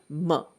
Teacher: you say the mer in comfort say ma by itself ma it's clearly a bilabial sound and it's a nasal sound